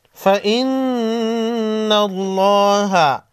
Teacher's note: نون ساکن کے بعد حروف خلقی میں سے کوئی حرف نہیں، اخفائی حقیقی ہوگا۔ فإن اللہ، نون مشدد پر غنہ ہوگا، لفظ اللہ کے لام کو موٹا پڑھیں گے۔